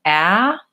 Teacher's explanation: that's a front vowel and with an open mouth and the tongue at the bottom so when I'm saying ah my mouth is the most open